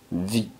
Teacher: labio de abajo como una F pero se pronuncia vit y la e no suena pero si Suena la t